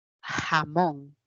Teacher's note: toda vez que encuentro una palabra que se escribe con j a nivel de fonemas le corresponde la fricativa velar